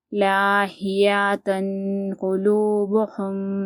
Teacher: تنوین کے بعد اگر حرف اخفا میں سے کوئی حرف آتا ہے تو ہم تنوین کو کیا کریں گے، گننا کریں گے، ایک الف کے برابر چھپا کر پڑھیں گے